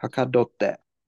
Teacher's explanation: So hakadotte with the glottal stop.